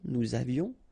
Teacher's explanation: final S not pronounced, and then little liaison